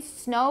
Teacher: rounded snow rounding is good that you noted the rounding snow because of the o your lips are rounded and air air passes through the nostrils the vocal folds are · so the tip of the tongue touches the alveolar ridge um the lips are apart the lips are rounded snow rounding